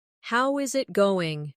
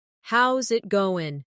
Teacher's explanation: The is disappears, and the final G in going often softens. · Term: connected speech